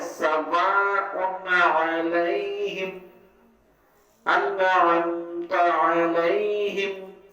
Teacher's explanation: نون کو خوب ظاہر کر کے اور جلد پڑھیں گے. اس اظہار کو اظہار حلقی کہتے ہیں.